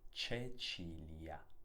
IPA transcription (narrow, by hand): t͡ʃet͡ʃilia